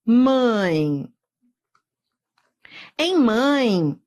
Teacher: eu tenho um ditongo eu fui da vogal paraa semivogal então repare que o som da semivogal é sempre I Então